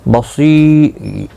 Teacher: صاد مستعلیہ ہے، پر پڑھا جائے گا